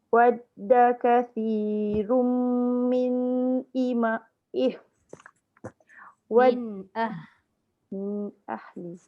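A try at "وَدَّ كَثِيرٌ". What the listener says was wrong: Jaga. Jangan lantunkan sebab dia sabdu.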